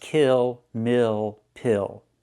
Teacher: Use the I sound plus the dark L.